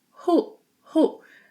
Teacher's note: it's pronounced in the back of your throat.